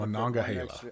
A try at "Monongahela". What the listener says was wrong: I know your twang wants to cut syllables. You got to put an extra syllable in there. Monongahela.